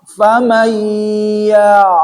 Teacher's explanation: si ainnya itu ngalir, ya, tidak tertahan. Ya, jangan ya, jangan disentak.